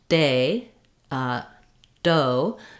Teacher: my tongue should be behind my teeth up against the alveolar Ridge or against the roof of my mouth directly behind my front teeth and you should feel day uh doe that the air stops